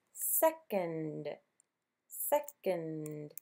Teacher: Now, for the second part of second, it is a schwa sound.